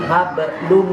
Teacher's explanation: Domatain bertemu mim, jadi domatainnya nggak bunyi un. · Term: idgham